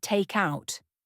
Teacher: The K in take flows into the O in out. So it sounds like tuck out. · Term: consonant to vowel linking